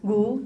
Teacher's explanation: when you're saying gu, do you have that pre-voicing? Gu. Yes, you do have that.